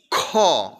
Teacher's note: এটা বলতে গেলে চাপ প্রয়োগ বেশি পড়ছে এবং বাতাস বেশি বের হচ্ছে তার মানে এটা মহাপ্রাণ তার মানে উচ্চারণের দিক থেকে এটা অতিব